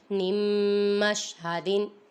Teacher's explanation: ادھر دیکھیں نون ساکن کے بعد حرف یرملون میں سے میم آ رہا ہے، ادھر ادغام ہو رہا ہے، گنہ کریں گے۔